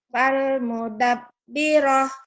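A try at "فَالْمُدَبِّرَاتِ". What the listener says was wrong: Fal mudabbirat. Mudabbiroh. Kalau tamar butoh iya. Ini tetap T. Kalau yang ta ini ya Bu. Ta ini iya jadi H. Ini tetap T. Fal mudabbirat.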